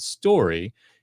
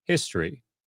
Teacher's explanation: Focus on the way that you pronounce the O in both words. In the first, you pronounced a nice full vowel, story. However, when you said the second word, you probably barely pronounced the O at all. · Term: shortened vowel sound